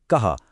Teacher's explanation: कः के आखिर में जो दो बिंदियां हैं जिन्हें विसर्ग कहते हैं, उनका उच्चारण एक हल्की ह की ध्वनि जैसा होता है, कः। आइए एक उदाहरण देखें।